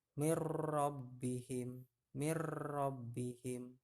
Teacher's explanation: mirrobbihim ya tulisannya Min rabbihim tapi Non matinya bertemu dengan roh bunyi non matinya hilang ke melebur ke huruf ro